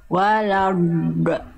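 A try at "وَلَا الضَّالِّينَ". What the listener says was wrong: Itu Bunda nempelin pinggir lidahnya yang mana? Yang kiri, yang kanan? Yang kanan. Nempel kemana? Oke, pinggir lidahnya ya, bukan ujung lidahnya ya, pinggir lidah. Pinggir lidah, udah. Nah, ini kan Bunda gini. Warad, do. Jadi bukan bagian permukaannya Bunda yang disentuhkan. Pinggir lidahnya itu pinggir, bukan permukaan lidah. Bukan bagian ini. Bukan bagian ini.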